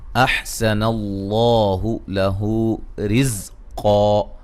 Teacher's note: سین کو باریک لفظ اللہ کو موٹا